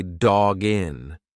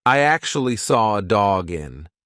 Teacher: So it's like the second part of that sound is jin. You've put the g in front of the next word. It's one sound.